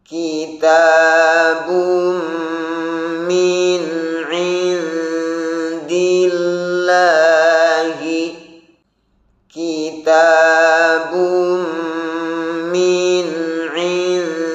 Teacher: Hati-hati ketika mengucapkan huruf ain, jangan sampai khayshum atau terdengar mendengung, dan jangan sampai huruf ain tersebut menjadi huruf yang tebal, karena huruf ain adalah huruf yang tipis. Begitu pula ketika mengucapkan huruf dal dari kata indillah, perhatikan dalnya harus dijaga sifat jahr dan syiddahnya.